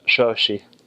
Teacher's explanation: And so that's kind of unique. Down south, the languages have a unique sound, which is that sh sound. It's like kind of a whistle.